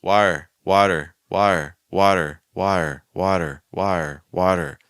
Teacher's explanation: Second time we do it with the fast D or flap T.